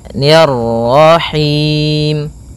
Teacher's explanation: Kemudian ni tipis ketemu dengan ra yang tafkhim. Ro tebal maka kita baca dengan bacaan tebal rnya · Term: ra tebal